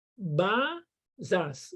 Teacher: O zás tem que ser mais curto e o ba mais comprido.